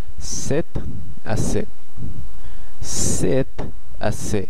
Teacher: তখন আমরা ফরাসিতে যে এক্সপ্রেশনটি ব্যবহার করে থাকি সেটি হচ্ছে c'est assez, c'est assez, খুবই simple, c'est assez, c'est assez। শেষে জেডটা উচ্চারিত হচ্ছে না এবং এখানে তেটা আয়ের সঙ্গে সংযুক্ত হয়ে যাচ্ছে